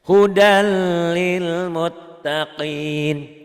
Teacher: Beda dengan tadi kan, kalau idgham digunakan ada dengungnya, ini hudal tuh. Gak hudal, gak ada dengungnya dan gak ditahan, sekedar lewat aja.